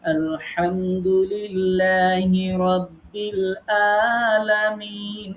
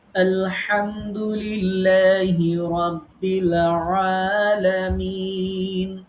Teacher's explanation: হামজা হলকের শুরু থেকে, আইন হলকের মধ্যখান থেকে উচ্চারণ করতে হয় চেপে ধরে। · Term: আইন এবং হামজা